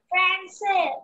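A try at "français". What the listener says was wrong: It's not Francais. Then which accent will come there? On C, that accent will come.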